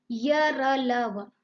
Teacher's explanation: अंतस्थ व्यंजनों का उच्चारण करते समय जिह्वा मुंह के किसी भी भाग को स्पर्श नहीं करती